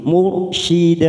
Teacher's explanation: ro sukun karena sebelumnya dumah maka kita baca tafkim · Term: tafkhim